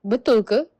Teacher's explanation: like betul ke? with a longer vowel and a higher pitch